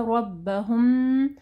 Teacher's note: میم ساکن کے بعد جو ہے با ہے، ٹھیک ہے، اخفاء الشفوی آ رہا ہے، ٹھیک ہے، غنہ کرنا ہے.